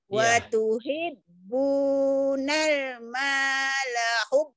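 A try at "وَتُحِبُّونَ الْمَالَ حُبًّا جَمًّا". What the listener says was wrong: hubal dari mana lamnya? Nggak ada hubal, hubang. Wa tuhibbunal mala hubang jamma.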